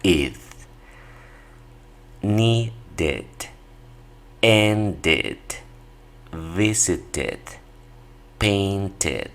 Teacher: todos los verbos que terminan con D o T en presente, en pasado los van a pronunciar con esta terminación, id.